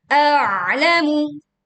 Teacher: Maka baca dulu hamzahnya, lalu kita menekan di ain, pita suara menyempit sehingga suara terdengar lebih berat